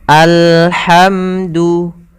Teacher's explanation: ha di sini ha yang kecil maka kita melafalkannya dari tengah tenggorokan kita